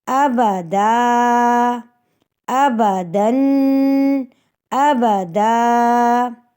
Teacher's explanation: لیکن جب ہم وقف کریں گے تو دو زبر کی تنوین کا جب ہم وقف کرتے ہیں تو ایک الف کے برابر بدل کے پڑھتے ہیں